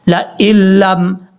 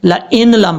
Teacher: حمزہ کو لام سے جب ملائیں گے تو بیچ میں نون کو چھوڑ دیں گے